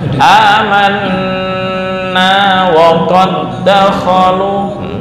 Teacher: nun atau mim yang bertasydid ditahan dengung 2 sampai 3 ketukan.